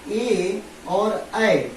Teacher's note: ए और ऐ जो होते हैं ये कंठ प्लस तालु से बोले जाते हैं।